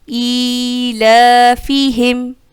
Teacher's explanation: ای یائے مدہ، لا الف مدہ، ایک الف کی مقدار دونوں کو کھینچا